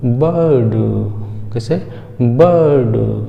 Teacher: बा को थोड़ा सा लंबा खींचेंगे और उसके बाद डा बोल देंगे